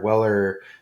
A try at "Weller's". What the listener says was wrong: I think it's pronounced Wellers. it's Wellers. Yeah, I think it's the S at the end.